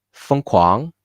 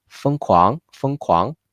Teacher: 今年 And the crazy in Chinese is 疯狂 非常好 疯狂 The 疯 is almost sounds like a neutral tone since it's too fast. But still we need to keep the 疯 like a very light tone 1 here.